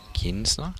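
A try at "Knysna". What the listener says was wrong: Pronounced Nizna. So the K is silent. Or Nizna.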